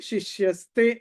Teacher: విసర్గ తర్వాత తే త ఉంది కాబట్టి ఇక్కడ విసర్గ స్థానంలో స రావాలి. కాబట్టి శిష్య స తే, కాబట్టి శిష్యస్తే అని వచ్చింది.